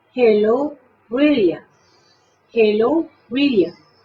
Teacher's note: De tal manera que la pueda pronunciar las dos como L y el acento de brilliant tiene que ser en la I